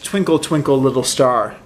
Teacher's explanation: each thing is kind of stressed unstressed stressed unstressed stressed unstressed and that's what makes kind of the meter of this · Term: rhythm pattern